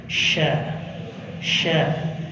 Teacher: Dia punya makhraj dari wasal lisan, tengah-tengah lidah. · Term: Huruf shin